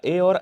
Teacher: ये आपका आ और ई से मिलकर के बना है। तो आ कहां से, कंठ से, ई तालु से बोला जा रहा है। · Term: कंठ तालव्य